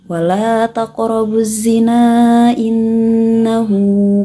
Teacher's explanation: Kalimat az-zina dan kalimat innahu, maka bacanya harus 4 harokat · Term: mad jaiz munfasil